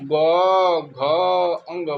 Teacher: इसमें हमारे स्वर तंत्र कंपन करती है तो इसमें स्वर तंत्र का कंपन होता है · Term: सघोष